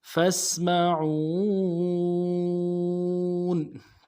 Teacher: بربکم فاسمعون، فاسمعون، فا کو سین کے ساتھ ملانا ہے، سین میں سیٹی کی آواز جاری رہے گی، اور عو میں واو مدہ ہے، عو ایک الف مقدار میں کھینچیں گے۔